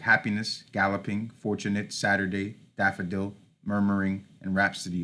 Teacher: Okay, so the scansion process, on the opposite side of the anapestic, we have the dactylic, which is a stressed syllable followed by 2 unstressed. So words like happiness, galloping, fortunate, Saturday, daffodil, murmuring, and rhapsody all follow that dactylic pattern.